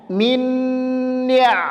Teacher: cara membacanya adalah ditahan didengungkan dua harakat